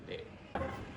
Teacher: Dengan tekanan glottis atau glottal ya